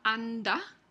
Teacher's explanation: después de una nasal el fonema de se produce como oclusiva